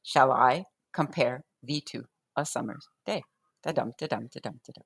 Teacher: So that's iambic pentameter. Each line consists of 10 syllables arranged in 5 pairs of unstressed and stressed. So da-dum, the stress comes on the second syllable in that case.